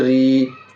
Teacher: یا ساکن سے پہلے را میں زیر ہے، یا مدہ ہوگی، یا مدہ کو تھوڑا کھینچ کر پڑھیں گے